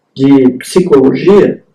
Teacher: essa sílaba que combina uma oclusiva com uma fricativa